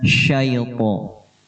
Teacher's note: ya daripada mad lain dibaca i, tidak e.